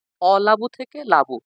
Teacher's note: শব্দের শুরুতে অ আছে, সেই অটা কিন্তু এখানে লোপ পেয়েছে। সেজন্য এটা হচ্ছে শব্দের আদি থেকে এটা স্বরধ্বনিটা লোপ পেয়েছে। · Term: স্বরলোপ